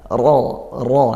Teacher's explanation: taim maka pangkal lidah kita naikkan ro ro seperti itu ya makhrajnya tetap di ujung lidah pangkal lidah kita naikkan untuk menyempurnakan sifat tafkimnya